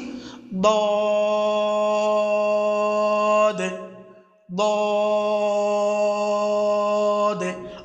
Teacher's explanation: জিহ্বার পার্শ্ব ও উপরের মাড়ির দাঁতের গোড়া থেকে উচ্চারিত হয়